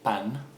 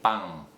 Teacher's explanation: that sound has changed from an n to an ng